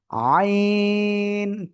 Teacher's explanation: এই গলার মাঝখান থেকে আপনার উচ্চারণ করতে হবে